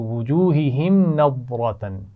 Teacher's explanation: وجوہہم کی میم پر غنہ نہیں ہوگا. غور سے دیکھیے، ٹھیک ہے، میم ساکن ہے، اس کے بعد نون ہے تو یہاں پر غنہ نہیں کیا جا سکتا.